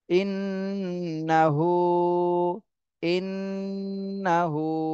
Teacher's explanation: হু তে এক আলিফ টান দিতে হবে উল্টা পেশ